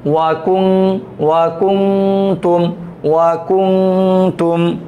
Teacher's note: ওয়াকুং, তামিম পেশ তুম, ওয়াকুং, ওয়াকুং তুম, ওয়াকুং তুম। ঠিক আছে, ওয়াকুং তুম গুণনা করতে হবে নাকের ভিতর লুকিয়ে। কুং, এই গুণনাটা কিন্তু নাক বন্ধ করে করা যায় না, কুং বন্ধ হয়ে যায়।